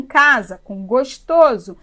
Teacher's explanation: o s no meio de duas vogais tem som de z